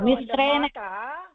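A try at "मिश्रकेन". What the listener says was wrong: மிஸ்ர கேன வரும். மிஸ்ரகேன. பெரிய நா சின்ன நாள் சவுண்டு தான்.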